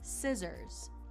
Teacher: that double S is going to give you more of a Z sound